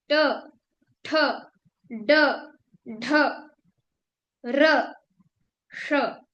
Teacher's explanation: आप देखिए ट कहाँ से बोल रहे हैं, उसको मूर्धा बोलते हैं। जहां पे जीभ ट बोलने के लिए ऊपर जा रही है, उस पॉइंट को हम मूर्धा बोलते हैं · ट, ठ, ड, ढ, र, श, ये सब मूर्धा से यानी ऊपर से बोले जा रहे हैं। आप देखिए ट कहाँ से बोल रहे हैं, उसको मूर्धा बोलते हैं।